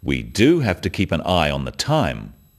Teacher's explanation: notice the emphasis on the word do